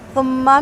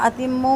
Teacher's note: میم مشدد اکمل غنہ